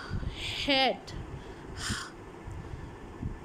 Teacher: the gap between the vocal cords is used टू make Audible friction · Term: ग्लॉटल साउंड